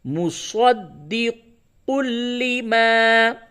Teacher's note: تنوین کے بعد لام، حروف یرملون میں سے لام آیا ہے، یہاں پہ ادغام تو ہوگا لیکن ادغام بلا غنہ ہوگا، یعنی غنہ نہیں کیا جائے گا